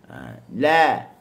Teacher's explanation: Dia sentuh di makhraj hujung tepi lidah, sentuh di gusi, dia turun di bawah.